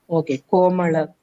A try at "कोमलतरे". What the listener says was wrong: கோமல்லா கிடையாது, லா.